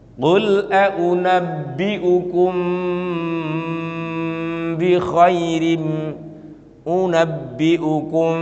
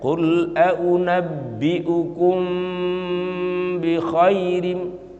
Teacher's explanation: Mimnya itu harus ditahan dan disamarkan. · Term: ikhfa syafawi